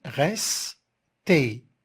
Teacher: puisque res, cette syllabe, elle est fermée par le son s, la consonne s, alors on doit faire le est ouvert.